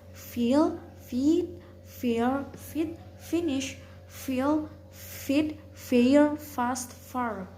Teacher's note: Voice velar stop sound G, give, gift, get, guess, guess, gape, guard, gorge, George, gone, goose. Voiceless labiodental fricative sound F